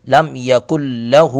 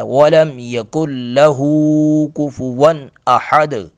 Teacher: لام کو چھوٹا پڑھنا ہے، ہو کو لمبا کرنا ہے